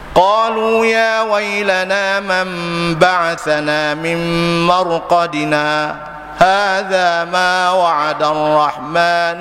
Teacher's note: Saktah ni makna kita berhenti sekejap tanpa mengambil nafas.